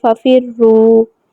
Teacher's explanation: یہاں پہ را جو ہے اس کے اوپر پیش ہے تو را کو پر پڑھا جائے گا